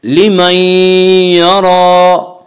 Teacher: لمن یرا را کے اوپر کھڑا زبر ہے. کھڑا زبر کو ایک الف کے برابر کھینچ کر پڑھیں گے اور را کو پر پڑھیں گے